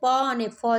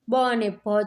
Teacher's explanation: પ અને ફ છે એ અઘોષ છે બ અને ભ છે એ ઘોષ છે